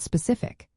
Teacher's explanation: The emphasis is on the cif part just before the ending.